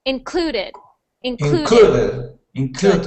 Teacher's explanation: we stress the syllable clue so we say clue the loudest